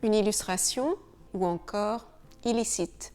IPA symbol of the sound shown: il